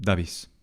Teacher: It is likely that in a verb such as dabis, the final front vowel was articulated in a reduced tension and that it tended to open slightly